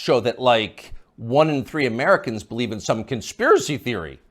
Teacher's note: the upspeak, the rising inflection at the end of the sentence